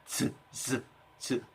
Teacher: 발음할 때 이렇게 공기가 약간은 터지는 듯 하면서 이 입안에 공기의 공간을 굉장히 좁게 해서 공기가 세게 마찰이 돼서 흘러나가는 소리인 거죠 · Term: 파찰음